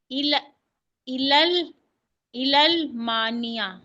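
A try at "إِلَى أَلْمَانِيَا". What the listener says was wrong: क्यों मिला रही है? लाम है कोई मिलाने के लिए यहाँ पे? इला, इला मानिया। या से पहले जबर हो तो खड़ी जबर पढ़ते हैं, इला।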